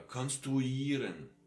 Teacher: All these ieren words, which are more international origin, get this uieren sound, a long one.